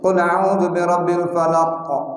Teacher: qa-nya itu yang menandakan bahwa huruf itu memang keluar dari pangkal lidah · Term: huruf qaf